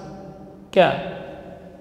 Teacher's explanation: Kemudian kaf huruf syiddah dan hamz. Ka keluar dari pangkal lidah. Pangkal yang dimaksud itu bagian pangkal, yaitu setelahnya menempel pada langit-langit yang lunak dan yang keras bersamaan. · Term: huruf kaf